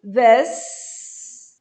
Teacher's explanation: E curto, como se fosse um E fechado.